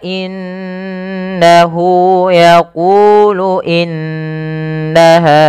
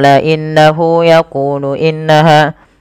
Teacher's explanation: kita baca dengan bacaan gunah dengan cara menahan suara bunyi nunnya dan dimasukkan ke rongga hidung sepanjang dua harakat